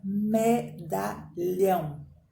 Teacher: Porque a sílaba forte é a última. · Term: Oxítona